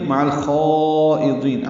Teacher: عین وسط حلق سے ادا کرتے ہوئے لام سے ملائیں گے، اظہار قمری ہوگا